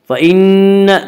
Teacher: فَإِنَّ نون مشدد غنہ ہوگا. غنہ کی مقدار ایک الف ہے.